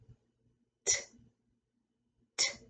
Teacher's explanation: The letter T makes the T, T sound. When I make the T sound, I put my tongue on the roof of my mouth